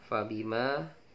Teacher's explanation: Kenapa mattabi'i? Karena ma itu fathah diikuti dengan alif di depannya, panjangnya adalah 2 harokat